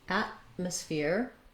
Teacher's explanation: We have the a, black cat vowel, for our first vowel, just like the word at.